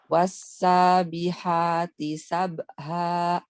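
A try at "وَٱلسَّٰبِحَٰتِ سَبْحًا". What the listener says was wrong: Sabha. Jangan berhenti. Jangan sabha. Sabha. Ngalir aja.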